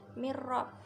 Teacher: nun sukun bertemu dengan ro, itu idgham bilahunah